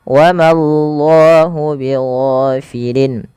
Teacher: bila didahului dengan fathah maka Allahnya tebal tapi Ma jangan ikut tebal jangan wallah tapi wallah Ma tipis